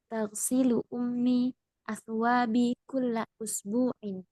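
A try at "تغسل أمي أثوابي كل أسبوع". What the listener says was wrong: Nah, ahsanti.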